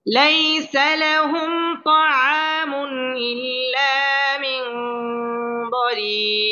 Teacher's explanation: মদের হরফের বামের হরফে ওয়াকফ হওয়ার কারণে এটা মধ্যে আরজি এখানে তিন আলিফ টেনে পড়তে হবে